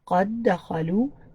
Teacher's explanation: you are just going to combine the two dals together into one dal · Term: idgham mutamathil